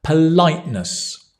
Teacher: So politeness is the noun, politeness, and that stress goes on the light